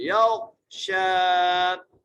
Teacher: اذا یغشا یا کو غین سے ملانا ہے، غین کو موٹا کر کے پڑھنا ہے. یغشا شین کو ایک الف مقدار کھینچ کے پڑھنا ہے